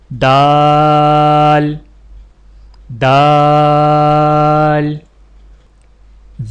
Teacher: سامنے والے اوپر کے 2 دانتوں کی جڑ سے لگا کر باریک آواز میں پڑھیں، یعنی دال دال۔